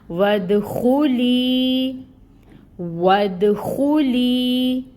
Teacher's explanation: نون مشدد ہے تو یہاں پر غنہ ہوگا، غنہ کی مقدار ہوگی 2 کاؤنٹس، اور جو یہ زبر کی حرکت ہے یہ 1 کاؤنٹ حرکت ادا کی جائے گی۔